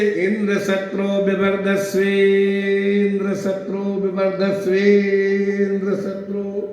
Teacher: ई उदात्त बोलने लगे